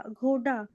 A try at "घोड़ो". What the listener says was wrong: हाँ, घोड़ा तो है, इसके आगे में भी एक मात्रा लगी है।